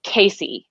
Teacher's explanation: c a e are the sounds of my name e and the a is a very american midwestern a because i'm from the midwest so it's really wide a · Also, I just want to add with Casey, with your beautiful A vowel, it's something in the phonetic world called a triphthong, which means it's three vowels.